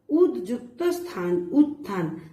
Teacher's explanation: দয়ের প্রভাবে স দন্তের স লোপ পেয়েছে। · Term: ধ্বনির লোপ